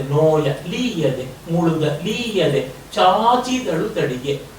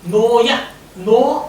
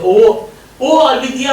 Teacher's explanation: ನೋ ಏರಿಕೆ ಬರುತ್ತೆ ಓ ಓ ಅಲ್ಲಿದೆಯಾ ಅಂತ ಓಕಾರವನ್ನ ಏರಿಕೆಗೆ ಹೇಳ್ತೀವಿ